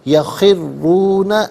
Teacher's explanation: را پر پیش ہے، را کو پر کر کے پڑھیں گے، مشدد ہے، جماع کے ساتھ پڑھیں گے، یخرون لی الاذقان، لام کے نیچے زیر ہے، اسے ناظرین الاذقان کی لام ساکن کے ساتھ ملائیں گے، درمیان میں سے الف یعنی حمزہ کو حذف کیا جائے گا۔